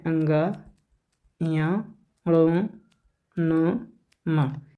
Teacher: मुख और नाक दोनों का प्रयोग होता है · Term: अनुनासिक